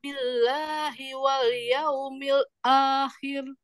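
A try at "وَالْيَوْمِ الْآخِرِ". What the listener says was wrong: Coba untuk huruf lam, sempurnakan sifat tawassut atau bainiyahnya. Jangan wal yaumil akhir. Itu belum tepat ya. Wal yaumil akhir. Makhrajnya bukan wal. Bukan wal, bukan lalilu. Coba diluaskan lagi nempelnya ujung lidah. Lalilu. Lali. Wal yaumil. Bukan wal, yaumil. Luaskan lagi. Masih ya.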